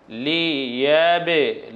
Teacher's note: এব না বলে মুখ ফেটে আরো একটি অতিরিক্ত আওয়াজ বের হয়েছে যাকে বলছি আমরা প্রতিধ্বনি লিয়াবে এরকম হয়েছে দেখুন লিয়াবে লুয়াকুম আইয়ুকুম আহসানু আমলা এখানে আর